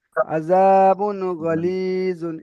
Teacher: গয়েন এসেছে তাই এটা ইজহার হবে, এখানে গুন্না হবে না